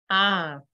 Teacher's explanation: on va avoir un son qui est proche de AO, mais avec le A nasalisé. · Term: diphtongue A tilde O